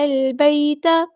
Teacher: لام یہاں پر لام قمریہ ہے، اس کو ہم ظاہر کریں گے، یا ساکن سے پہلے زبر ہے تو ہم بیتا نرمی سے موڑیں گے، ٹھیک ہے؟